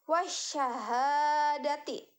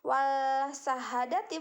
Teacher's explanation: alif lam atau the huruf setelah alif lam bertasydid itu maka alif lam di sana tidak dibaca jelas